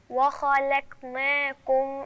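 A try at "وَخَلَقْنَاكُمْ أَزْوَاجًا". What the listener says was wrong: انا مش عايزاكي ترقق اللام وبعدين ترقق القاف يعني لازم انا اوزن ما بين الخاء والقاف واللام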